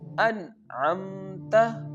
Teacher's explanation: we have to pronounce the noon sound very clearly without taking it from nose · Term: izhar